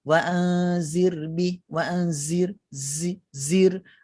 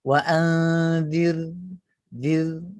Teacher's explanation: Sepatutnya wa anzir zir dikeluarkan lidah sedikit di hujung gigi thanayul ulia, kemudian bila masuk pada huruf ra, lidah diangkatkan ke atas.